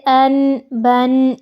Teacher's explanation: غنہ ہے ناک میں آواز کا لے کر جانا، یہ نہیں ہوگا، اس میں صرف نون کی آواز کو ظاہر کیا جائے گا